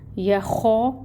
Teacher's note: الف ساکن سے پہلے خو کے اوپر زبر کی حرکت ہے، خو کو بھی 2 کاؤنٹس لمبا پڑھیں گے، یا خو، اور پھر فا کے اوپر پیش کی حرکت ہے، 1 کاؤنٹ۔